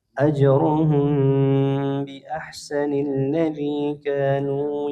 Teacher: mim sukun bertemu dengan huruf ba. Hukumnya ikhfa syafawih. Ya, mimnya dilengungkan dua harakat.